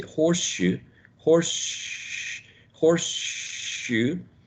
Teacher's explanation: So when you say horseshoe, horse, horseshoe, the s becomes more similar to sh. So there is an assimilation present here.